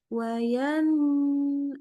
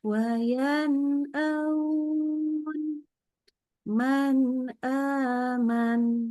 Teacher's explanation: jadi nunnya benar-benar jelas engak usah tambahin dengung jadi jangan wayanun enggak usah gitu Biasa aja waanun man aman